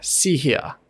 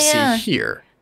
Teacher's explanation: gangsters will tend to have this very clear R dropping accent